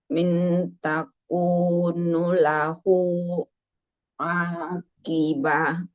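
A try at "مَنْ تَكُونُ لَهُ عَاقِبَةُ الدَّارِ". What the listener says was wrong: man ini. Apa man? Ini man, bukan min.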